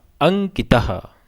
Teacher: अंग के ऊपर जो अनुस्वार है वो अनुस्वार क वर्ग के अंतिम वर्ण में बदल जाएगा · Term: पंचम वर्ण